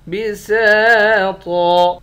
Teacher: سین کے بعد الف ہے، الف حروف مدہ ہے، ایک الف کے مقدار کھینچ کر پڑھیں گے، طا کو بھی موٹا پڑھیں گے۔ آخر میں دو زبر کی تنوین ہے، دو زبر کی تنوین میں جب وقف کرتے ہیں ایک زبر بن جاتا ہے۔